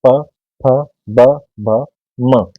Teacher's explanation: ओस्ट में हमारे होठ आपस में स्पर्श करेंगे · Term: ओष्ठ